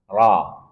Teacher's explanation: ro punya sifat khusus yaitu takrir, getaran. Tetapi ingat getarannya tidak boleh lebih dari sekali